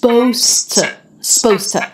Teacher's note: we drop the ZD we make it instead an s